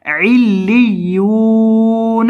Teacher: لام کو اور یا کو ان دونوں کو آپ نے سختی کے ساتھ پڑھنا ہے کیونکہ یہ دونوں یہاں مشدد ہے اور یا کو لمبا کرنا ہے کیونکہ اس کے بعد واو · علیون یعنی یہاں یا کے بعد واو مدہ ہے علیون تو یا کو آپ نے لمبا کر کے پڑھنا ہے کیونکہ اس کے بعد واو مدہ ہے